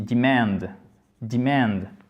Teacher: l'accent tonique se fait sur la deuxième partie